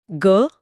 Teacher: अब ग बोलिए। ग हां कंपन हो रहा है। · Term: घोष वर्ण